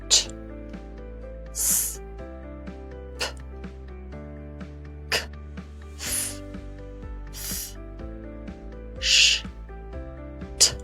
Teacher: These are voiceless sounds.